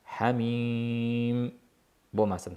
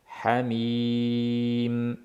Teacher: mim g'unali orasidagi ye ya'ni mad harfi g'unnasiz bo'lishi kerak